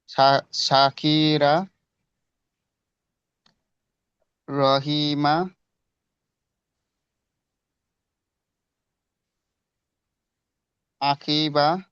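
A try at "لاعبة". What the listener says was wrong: না, আকিবা নয়। দেখেন, আলিফ এবং লামের মধ্যে পার্থক্য আছে, এটা হবে লাম, ঠিক আছে। কারণ আলিফ কোনোদিন পরের অক্ষরের সঙ্গে জোড়ে না। যখন পরের অক্ষরের সঙ্গে জোড়ে তখন লাম হয়।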